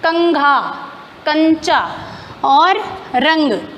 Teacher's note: जब हम अनुस्वार को बोलते हैं तो हवा सीधा नाक से बाहर आ जाती है। तो उच्चारण करते समय हवा नाक से निकलती है और जब आप उच्चारण कर रहे हो तो आपकी हवा नाक से ही बाहर आएगी।